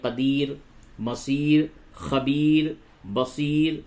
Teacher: اور یہ جو را ہے، را کے اوپر پیش ہے، اگر آپ ملا کر کے پڑھتے ہیں تو مصیرو را کو پر کریں گے، لیکن جب را پہ وقف کیا جائے تو یہ قاعدہ ہے کہ رائے موقوفہ سے قبل اگر یا ساکن ہو تو وہ را ہر حالت میں باریک پڑھی جاتی ہے. رائے موقوفہ یعنی وہ را جس پہ وقف کیا جائے.